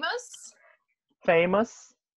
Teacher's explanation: a sílaba forte de famous é a primeira